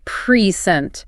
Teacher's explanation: If I emphasize the first syllable, I say present. The vocal weight drops on the p. That makes it a noun, a gift.